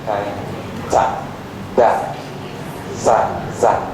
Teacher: the tongue touching the alveolar ridge